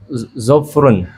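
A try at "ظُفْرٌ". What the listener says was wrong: Harokatnya.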